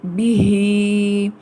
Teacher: ہا کی آواز کو اقصی الحلق سے ادا کریں گے، مگر اگر ہم اس کو وقف کریں گے تو یہاں پر ہم ہا کو ساکن کر دیں گے.